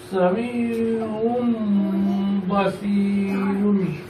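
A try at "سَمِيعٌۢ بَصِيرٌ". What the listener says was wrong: মা বলো, শুধু গুণনা করলেই হবে না, একটু মানে কি বলে যে একটু মানে গুণাটা একটু লম্বা সময় ধরে করতে হবে, ঠিক আছে? মিম বাদি মানে গুণাটা একটু লম্বা সময় ধরে করতে হবে, একবারে সংক্ষিপ্ত করে ফেললে হবে না।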